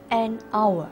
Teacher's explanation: the letter H is present but it is not sounded